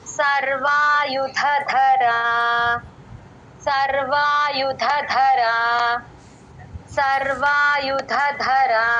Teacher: సర్వాయుధధర రెండు ధాలు మహాప్రాణాలు అట్లా చూసుకోండి